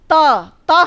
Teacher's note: त हम बोलते हैं तो हमारी जीभ हमारे दांतों तक आती है, और अब दांतों पे बिना लगे त बोलिए, दिक्कत हो रही है ना।